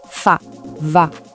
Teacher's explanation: Pour les sons feux et vœux, le mouvement est subtil mais il est crucial. La lèvre inférieure vient se poser juste sous les dents du haut et elle laisse passer l'air.